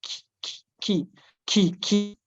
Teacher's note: Kaf tadi makhrajnya itu di lidah yang bagian belakang atau pangkal lidah. Nah, tapi kalau secara makhraj mungkin tidak ada kendala ya, seperti kita mengucapkan K pada bahasa Indonesia kan K biasa.